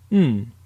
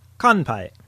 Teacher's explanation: But there is one more sound in Japanese that is worth mentioning now, and that is the nasal sound. It is not an N sound, but rather a mix between an N and an M.